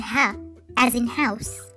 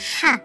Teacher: the sound of ha comes from the middle part of throat